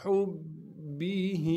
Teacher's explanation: با سے ملائیں گے اس لیے کہ با پر تشدید ہے، تشدید ہونے کی وجہ سے با پر تھوڑا سا ٹھہراؤ رکھیں گے